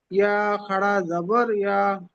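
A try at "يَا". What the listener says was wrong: তবে একাধিক টান তো দিয়েছেন, তো আপনারা শিখছেন, এখানে আরো বেশি করে টান দেবেন, বুঝতে পেরেছেন? ঠিক আছে, কিন্তু আরো বেশি করে টান দিয়ে পড়বেন, যাতে আমরা বুঝতে পারি যে এটা টানের পড়া, বুঝতে পেরেছেন? যখন আপনি বেশি করে টান দিয়ে পড়বেন, তখন আপনার মাথায় সবসময় এটা থাকবে, এটা টানের পড়া, টান দিয়ে পড়তে হবে।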